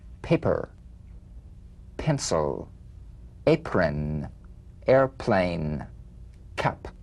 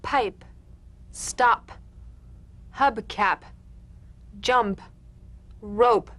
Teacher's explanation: The whispered tap of this drumbeat P is played with a light springing apart of the lips, just like for the B. On the springing away, feel a B in a whisper without any puff of air. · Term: unvoiced labial stop consonant